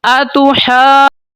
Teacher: یہ ہا کے اوپر مد ہے، اس کو 4-5 الف تک لمبا کریں گے · جب مد کمپلیٹ ہو جائے گی پھر آپ نے جیم کو ساتھ ملانا شروع کرنا ہے، پھر جیم کے اوپر مد ہے، اس کی مد آپ نے کمپلیٹ کر کے نون کو ساتھ ملا دینا ہے اینڈ پہ، اس کے بعد نون کے اوپر غنہ کر کے نون زیریا نہیں پڑھ لینا ہے، ٹھیک ہے۔